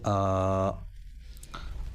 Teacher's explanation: اس لیے کہ حمزہ پر کھڑا زبر آیا ہوا ہے، لہٰذا یہ حرف مدہ کی طرح ایک الف کے برابر کھینچ کر پڑھا جائے گا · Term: مد صلہ